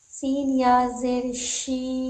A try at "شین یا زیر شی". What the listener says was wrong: سین نہیں شین یا زیر شی. شین پڑھنا بھی تو ہے صرف شی نہیں بولنا ہے اس سے پہلے شین پڑھنا بھی تو ہے تب نہ وہ شی پڑھیں گے آگے چل کے. شین یا زیر شی.